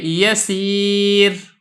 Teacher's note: ان تینوں صورتوں میں را کو باریک کر کے پڑھا ہے · را ساکن ما قبل یا ساکن ہو تو ایسی صورت میں بھی را باریک ہوگی. جیسا کہ یسیر، اب یہ دیکھیں یا ساکن ہے، را بھی ساکن ہے، یا بھی ساکن ہے، تو را کو باریک کر رہے ہیں.